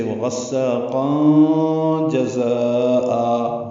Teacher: ملانے کی صورت میں تنوین کے بعد جیم آنے کی وجہ سے وغساقا جزاء ہوگا، یعنی اخفا کریں گے